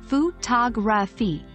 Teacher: in the word photography, the second and fourth syllables are pronounced with a reduced sound